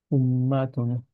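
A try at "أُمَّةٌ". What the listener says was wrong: মাতে টান হয়ে গেছে একটু, হ্যাঁ। উম্মাতুন।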